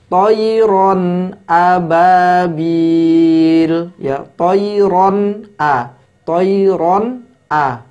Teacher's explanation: Hamzah adalah salah satu dari huruf halqi yaitu huruf tenggorokan yang berada di tenggorokan paling bawah sehingga membacanya tohiron ababiel ya choiron A Choir on a bukan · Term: izhar halqi